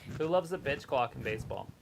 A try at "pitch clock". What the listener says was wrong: It sounded like you said the bitch clock. The bitch clock. bitch, not the pitch. The bitch clock.